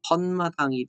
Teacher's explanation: 터 더하기 마당은 지금 니은 소리가 이렇게 덧났다. 턴마당이 되는 거죠. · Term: 사이소리 현상